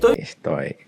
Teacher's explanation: So sometimes you'll hear bits of the S, sometimes you'll just hear the S totally dropped